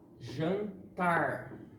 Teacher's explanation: em jantar, o tar é a sílaba tônica e ela não tem acento.